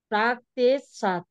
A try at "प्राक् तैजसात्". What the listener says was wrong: प्राक तेजसात, आधा तेज, और त पर डबल एक की मात्रा है, प्राक तेजसात।